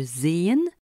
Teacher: Le E transcrit le e long et mi fermé de Zen comme le e bref et miverten.